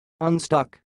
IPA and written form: ʌnˈstʌk (unstuck)